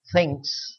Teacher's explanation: The distinction between the sounds is to be made with a quick change in the position of the tongue from the alvolar ridge to the teeth